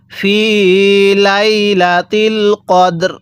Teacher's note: প্রথম সাকিনটা পরিপূর্ণ উচ্চারণ করব দ্বিতীয়টা হালকা উচ্চারণ করব যেমন এখানে দালটা পরিপূর্ণ উচ্চারণ করব র টা হালকা উচ্চারণ করব